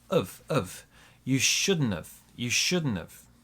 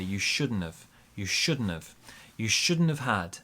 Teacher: the n in shouldn't joins the of and the T kind of disappears. And we say you shouldn't have.